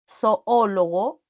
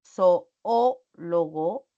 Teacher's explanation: Al pronunciar zoólogo, la sílaba que tiene la mayor fuerza de voz es la O. Esta O. Entonces, esta es la antepenúltima y lleva ti. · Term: sílaba tónica